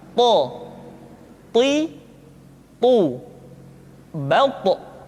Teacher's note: To diucapkan dengan menyentuhkan ujung lidah dengan gusi-gusi dua gigi seri bagian atas. Sifat yang dimiliki oleh huruf to yang mesti nampak ketika kita ucapkan adalah sifat al-isti'la dan sifat al-itbaq.